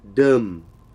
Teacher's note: the informal word for to drink is dim which is a low low tone